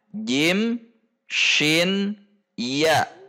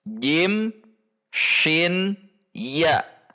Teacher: Jim, shin, ya, harusnya posisinya sama, yaitu tengah lidah dengan langit-langit bagian tengah.